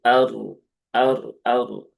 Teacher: ra yang didahului ya harakat fathah yaitu pada hamzah di situ ya hamzahnya ee fathah maka r-nya dibaca dengan tafkhim atau tebal